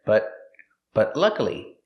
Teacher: The T in but is a stop T. Stop the air, but luckily, and link it to the next word.